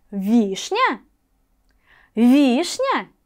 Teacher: один из этих звуков будет ударным Давайте выделим ударение вишня вишня первый слог будет ударным